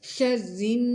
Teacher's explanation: را کو باریک پڑھنا ہے، نون پر غنہ ہوگا